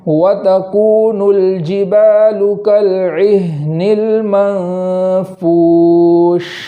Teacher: اور آخر میں جو شین ہے اس شین کو اس طریقے سے پڑھیں گے کہ منہ میں پوری آواز پھیل جائے